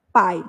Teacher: o a se destaca e o i perde o som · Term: semivogal